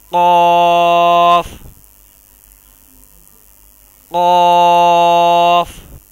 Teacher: خوب موٹا اور پر کر کے پڑھیں گے اور اس میں قلقلہ پیدا ہوگا